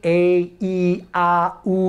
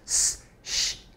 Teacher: your hand to your throat and say eh e ah oh you feel your throat vibrate hold your hand there now and say Shh you don't feel it vibrate